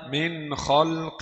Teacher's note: نون ساكنة مظهرة قبل الخاء المفتوحة